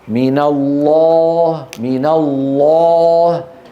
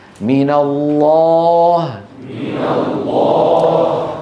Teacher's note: الألف قبلها لام، ليست حرف استعلاء لكنها مفخمة، فتفخم الألف، تفخم الألف تبعا للام.